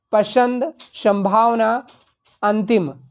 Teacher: नाक से अनुस्वार की आवाज़ निकलती है